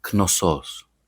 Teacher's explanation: And the stress goes on the last syllable.